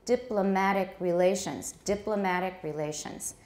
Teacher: Diplomatic relations. You can still hear a bit of a stress on the mat, but di now has taken over the main stress in this phrase. So diplomatic relations. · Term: stress has shifted